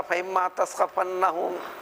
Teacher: نون اور میم کے مخرج کی قربت کی وجہ سے عربی کا قاعدہ ہے دونوں میں مرج کر دیتے ہیں، جس کو ادغام کرنا کہتے ہیں